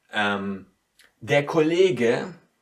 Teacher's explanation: the G is in between two E's, two vowels, and so it gets very distinct